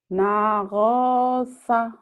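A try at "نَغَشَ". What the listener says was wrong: Shin. Nih, banyak bergaul sama Bu Rehan, shinnya hilang ya. Beliau pintar tapi shinnya belum keluar. Kebayang nggak kalau sikat gigi bagian bawah atas kan dibuka lebar. Nagosha, shin. Iya, sya.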